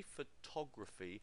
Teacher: we put the stress here on the second syllable